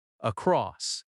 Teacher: Across has stress on cross, across. From is softer.